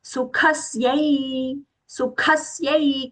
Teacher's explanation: kha mahaprana, and that half sa is aghata, sa and ya with the I long sound